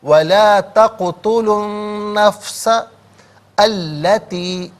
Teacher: حرف شمسیہ وہ حرف کے جس پر الف لام تو ہو لیکن لام کو پڑھا نہ چاہے، تو یہاں پر لام کا ساؤنڈ نہیں ہوگا، نون کا غننے کے ساتھ ساؤنڈ ادا کیا جائے گا